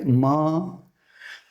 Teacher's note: સહેજ નાકમાંથી સાથોસાથ બોલાય છે, એટલે આ અનુનાસિક વ્યંજન છે